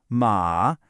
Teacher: Horse does this little dip and comes back up.